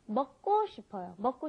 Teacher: when you've got that K, the giuk, followed by another giuk, it ends up being a double giuk most of the time. So it's not 먹고 싶어요, it's 먹고 싶어요.